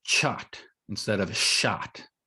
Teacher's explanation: since there's not a sh sound that's prevalent in Spanish, you might get chot instead of shot